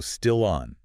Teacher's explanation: That final consonant sound naturally attaches to the following vowel sound. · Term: Consonant linking to a vowel